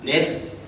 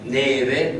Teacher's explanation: troncava tutte le finali, per cui diceva nef per dire neve, piof per dire piove